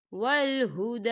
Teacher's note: دا یہاں دیکھیے کھڑی حرکات ہے، تو ہم اسے 2 حرکت کے برابر کھینچ کے پڑھیں گے۔